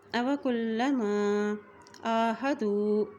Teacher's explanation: کاف کی پیش کو لام کے ساتھ ملا رہے ہیں، لام کے اوپر شد ہے۔ أَوَكُلَّمَا عَاهَدُوا، آئین کے اوپر کھڑی زبر ہونے کی وجہ سے آئین کو ایک حرکت لمبا پڑیں گے۔